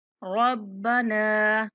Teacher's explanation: नून को 3 से 4 सेकंड तक लंबा करके पढ़ेंगे। अब बा पर कलकला करेंगे।